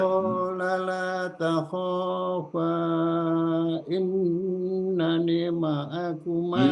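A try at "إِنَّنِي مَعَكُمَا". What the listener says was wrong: Innani, ininya panjang. Nah, U-nya pendek.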